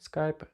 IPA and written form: skaɪp (Skype)